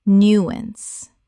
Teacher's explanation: Two syllables with the stress on the first. The ow makes an ah sound.